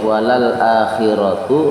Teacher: ro di situ adalah ro berharokat fathah, berarti tafhim